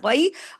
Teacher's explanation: غین کو ہیوی بھی کرنا ہے، یا لین کو پڑھنا ہے، غی، را کو ہیوی بھی پڑھنا ہے خود، اور آگے را کے پیش کے اثر کی وجہ سے اللہ کے نام میں لام کو بھی ہیوی کرنا ہے، باقی تمام باریک ہیں۔